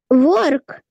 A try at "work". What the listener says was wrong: Только в начале будет... Так скажем, губный согласный work, work. А так ты почти правильно пронесла. Work.